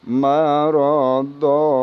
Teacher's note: Bila berhenti tanwin, kita berhenti waqaf, maka tanwin dirubah menjadi panjang 2 harokat. Dinamakan hukum tajwidnya ialah mad iwad.